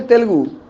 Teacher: तेलुगु मतलब ते में जो ए है ना उसको ह्रस्व बोलते हैं